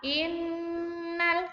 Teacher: Inna, ini ada gunnah, ditekan 2 ketukan, ditahan dulu membacanya.